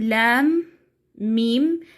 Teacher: أراعي الغنة أثناء إدغام الميم في الميم، لام ميم، إدغام الميم في الميم ومراعاة الغنة فيها.